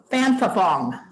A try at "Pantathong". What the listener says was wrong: Don't pronounce the H's. Pantathon.